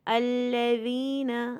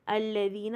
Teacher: زبان تھوڑی سی باہر آئے گی ذال کا مخرج پہ، الذین، اور یا ساکن سے پہلے زیر ہے تو 2 کاؤنٹ ہوئے گا۔